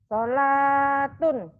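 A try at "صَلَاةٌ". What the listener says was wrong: Solatun. Bagus. Panjang nilainya ya.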